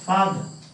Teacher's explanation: So you have to have a first syllable stress.